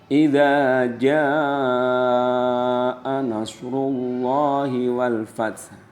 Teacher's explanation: pada kata jaa itu wajib dibaca 5 ketukan, namanya mad wajib mutasil